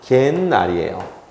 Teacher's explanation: 근데 개 타는 날이니까 혹은 개 모임에 있는 날이니까 관형격인 시옷을 집어넣을 수 있어요. 근데 시옷은 받침이 디귿으로 바뀌어요. 그런데 디귿과 니은이 만나면 디귿이 니은으로 바뀌어요. 그러면 발음은 뭐냐면 갯날이에요.